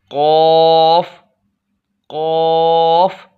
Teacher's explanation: अब चौथा मखरज है ज़ुबान की जर ऊपर वाले तालु के साथ लगाकर। ज़ुबान की जर उसी के ऊपर वाला जो तालु है उसके साथ लगाएंगे तो इंशाअल्लाह कौफ अदा होगा।